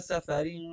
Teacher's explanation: سفرن کی سین کو آپ بالکل سیٹی کی آواز سے پڑھیں